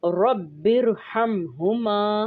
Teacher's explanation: रा साकिन मा कबल ज़ेर दूसरे कलमे में हो तो रा मोटा पढ़ा जाएगा। ये 2 कलमे हैं, रब्बिर और हमहुमा।